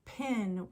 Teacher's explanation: when we say pin we release Air it's called an aspirated p and that's a different phone that's a different sound than the